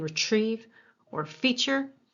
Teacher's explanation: most of us use a CH kind of sound in retrieve or feature